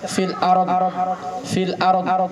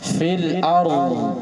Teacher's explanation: Tapi kalau fa ada suara angin keluar. Nah, kalau dot itu sifatnya rahwah. Ketika dia mati ada angin keluar. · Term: sifat rahwah